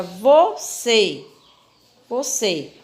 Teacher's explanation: Então essa palavrinha você é uma palavra classificada como oxítona porque a sílaba mais forte que pronunciamos com mais intensidade é a última sílaba